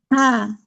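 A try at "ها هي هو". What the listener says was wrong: Oke, Masya Allah.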